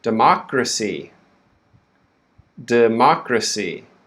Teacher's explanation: the stress now is on the second syllable.